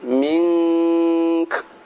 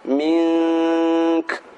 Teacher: Min dibaca dengung, kemudian kaf ada hamasnya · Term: hamas atau desis